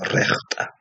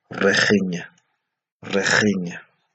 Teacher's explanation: aparece el sonido posvelar, ja, que me obliga a pronunciar la I como si fuera E